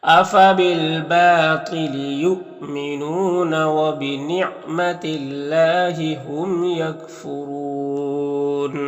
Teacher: حمزہ ساکنہ ہے واو کی شکل میں تو جھٹکا لگے گا. نون میں واو مدہ ہے. · نون میں واو مدہ ہے. یہاں پر اللہ کے لام سے پہلے تا کے نیچے زیر ہے تو اللہ کے لام کو باریک پڑھیں گے. یہاں پر میم میں اظہار شفوی ہوگا، را کو پر پیش را کو پر پڑھیں گے.